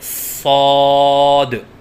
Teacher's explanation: الف کی ادائیگی منہ کے کھولنے سے ہوتی ہے، اور 3 الف کے برابر لمبا کر کے پڑھیں، جیسے صاد۔ غلطیوں کی نشاندہی: بعض بچے صاد کی ادائیگی کے وقت منہ بند رکھتے ہیں، یہ غلط ہے، جیسے صاد، کیونکہ الف کی ادائیگی منہ کے کھولنے سے ہوتی ہے، جیسے صاد۔